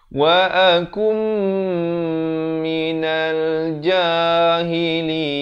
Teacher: Asalnya wa akun, datang mim jadi terus masuk beserta dengung 2 harakat.